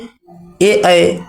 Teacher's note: ए कंठ प्लस तालव्य अर्थात कंठ तालव्य से